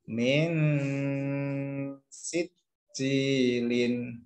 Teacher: Tidak langsung sin, tapi kita siap-siap langsung ke dengungnya, kita dengungkan dulu, kemudian kita masuk ke sin. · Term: ikhfa hakiki